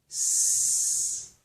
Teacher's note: force air out over your tongue. Don't vibrate the vocal cords for this one. S, no vibration, I can't feel anything. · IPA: /s/